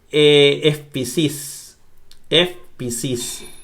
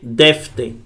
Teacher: Si la epsilon ypsilon está delante de una sorda, suena F.